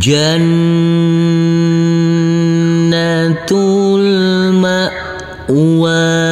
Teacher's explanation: huruf nun kita tekan kita tahan serta kita dungkan karena ini adalah bacaan gunah